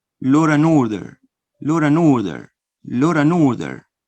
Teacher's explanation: I join the consonant N with the vowel O